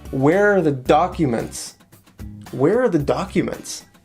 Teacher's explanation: here we have a stress on where and a stress on the first syllable in the word documents